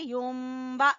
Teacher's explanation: नून की जगह पे हमने मीम पढ़ना है. युम्बा और गुन्ना करते हुए, और नून मुशद्दद का गुन्ना. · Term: इक़लाब